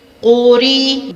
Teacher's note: را کے نیچے زیر ہو تو را باریک پڑھا جاتا ہے۔